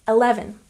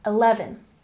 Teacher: don't forget your emphasis goes on the second syllable